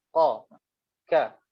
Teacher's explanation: Tapi qaf dengan kaf ni kita guna lidah yang belakang.